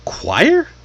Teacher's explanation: Ch normally makes ch sound, but in this case, it's a ck sound. Oi would normally sound like oi or something like that. But now it's a w sound.